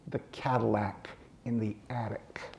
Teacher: the pleasure on his lips of all those short vowels and three hard clicks